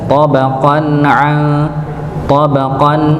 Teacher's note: qof dengan tanwin bertemu dengan ain dibaca jelas